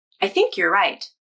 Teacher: if you're is reduced like it is in this sentence, I think you're right, then native speakers use the ER vowel, so it sounds like yer.